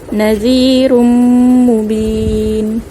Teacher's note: zal baris bawah, makhrajnya hujung lidah kita jelirkan atau kita keluarkan sedikit antara 2 gigi.